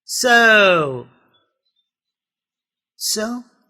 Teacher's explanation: the sound goes down it varies it glides it's not going straight up or down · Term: diphthongs